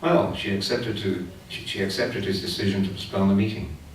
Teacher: one intonational phrase, consisting of several accents, each one of which is starting a rhythmic group